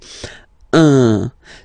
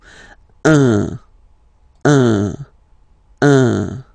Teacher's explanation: So it's what we call the nasal, so it goes in your nose, okay?